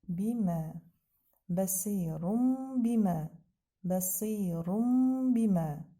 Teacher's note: onu əvəz edir bədi və yaxud da bəs yenə də balaca mim yazılır və biz bununla görürük ki, burda nun düşüb mimlə əvəz olunub. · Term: iqləb qaydası